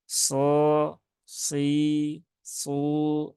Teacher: Tapi huruf sod itu tengah lidahnya lengket. Kemudian pangkal lidahnya naik.